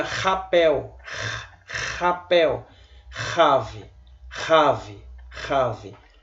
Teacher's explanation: isso sempre terá o som de R forte, como se você estivesse escarrando